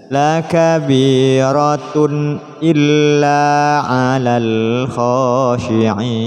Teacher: tanwin bertemu dengan hamzah, hukumnya izhar, dibaca jelas